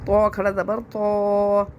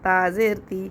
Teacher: اس کو تو ہم نے موٹا پڑھا، تا کو باریک پڑھا کیونکہ تو موٹا لفظ ہے اور تا باریک لفظ ہے، اس